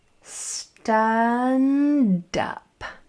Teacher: make sure that no R sneaks in after that D. It's going to be tempting to go der right there, but don't let that R in, okay?